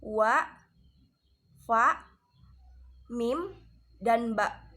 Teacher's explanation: al-syafatain atau dari dua bibir. Contoh hurufnya yaitu wa, fa, mim, dan ba.